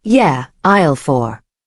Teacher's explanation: Your voice falls. That's the sound of confidence.